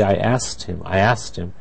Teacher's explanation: usually people in speaking really don't pronounce the k at all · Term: reduced form